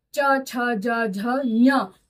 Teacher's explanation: तो एक ही तालु, एक ही उच्चारण स्थान से बोले गए अक्षरों को हम एक वर्ग में रख लेते हैं। तो च वर्ग के सभी वर्ण तालु से बोले जा रहे हैं, इसलिए हम इसको बोलेंगे च वर्ग।